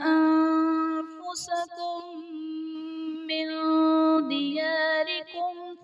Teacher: انفسکم من میں میم ساکن کے بعد دوسری میم ہے تو یہاں پر ادغام شفوی کا قاعدہ ہوگا، یعنی میم ساکن میں ہم غنہ کر کے پڑھیں گے